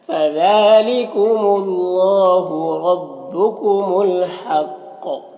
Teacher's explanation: وقف کریں گے تو قاف میں قلقلہ ہوگا